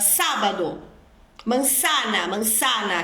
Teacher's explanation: tendência de pronunciar as letras s e z e a sílaba C seguida de e c seguida de I com o som de dois s igual ao português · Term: Ceceu